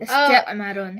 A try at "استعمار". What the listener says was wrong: استعمار. استعمار. The alif is long. استعمار.